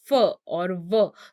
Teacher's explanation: So labiodental, that means sounds that are uttered using the lips and the teeth. So when I say f, that means I am using or I am touching my lips and my teeth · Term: labiodental sounds